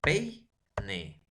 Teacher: La abertura de la cavidad oral empieza con mayor extensión y termina con menor extensión. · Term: diptongo decreciente